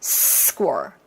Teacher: S 다음에 나오는 K 소리는 약간의 된 소리가 저절로 나와요. 소리가 편하려면. 그래서 약간 끝 사운드가 나오죠.